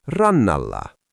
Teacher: the T disappears and the N just doubles itself. NT becomes N. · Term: NT becomes NN